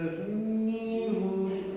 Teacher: Don't spread the vowel, don't widen your lips, make sure that they are like a trumpet, they are elongated and prolonged